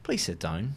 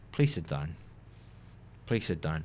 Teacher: So going up and then down, that would mean that I'm totally fine, and it's a polite way to ask him to sit down.